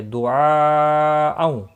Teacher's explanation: مد متصل ہے، چار الف کے برابر کھینچ کر پڑھیں گے